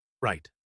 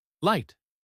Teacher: the r is formed with the tongue slightly curled back while the L places the tongue tip against the top of your mouth